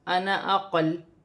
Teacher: وقف کی صورت میں زبر گر جائے گی اور لام ساکن ہو جائے گی